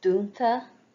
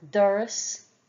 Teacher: the broad d is made with the tip of the tongue pressed against the upper teeth